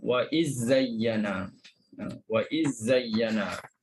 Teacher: Wa iz zayyana, masukkan terus ke dalam huruf sofir. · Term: idghamkan